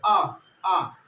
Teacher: मुख जो है पूर्ण रूप से खुला होता है, इसीलिए इसको अंग्रेजी में बोलते हैं ओपन। इसमें केवल आ आता है। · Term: विपरीत